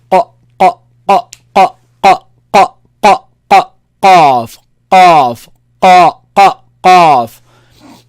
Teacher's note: Back of the tongue with soft palate. The soft the back of the tongue touches the soft palate up.